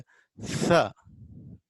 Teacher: between teeth, this is dental, between two teeth, upper teeth and lower teeth